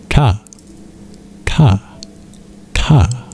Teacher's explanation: What we do is you curl your tongue back to pronounce it. It's called retroflex, named after the position your tongue must flex in to be able to pronounce it.